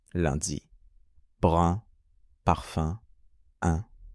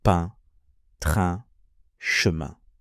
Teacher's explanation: Le son un, comme dans lundi, est légèrement plus ouvert que in, comme dans vin.